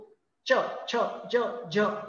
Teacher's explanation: टाळूचा पुढचा भाग आहे त्याला टाळू असं तिथं हवा अडवली जाते जीभ जो आहे तिचा फलक वर उचलतो च छ ज झ हे उच्चार होतात तिथून पुढे येते दाताचं